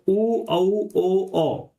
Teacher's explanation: उच्चारण करते समय जो आपका मुख है वो गोल हो जाता है। ठीक है, या आप कह सकते हो मुख का मतलब है आपके जो होठ है, जो आपके होठ है या ओष्ठ हैं, अगर उनकी आकृति या उनकी स्थिति गोल हो जाती है, यानी इस तरह से जो है आपके जो होठ है वो गोल हो जाते हैं। · उ औ ओ औ इनको बोलते समय हमारा जो होठ होते हैं उनकी स्थिति गोल हो जाती है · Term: वृत्ताकार, व्रतमुखी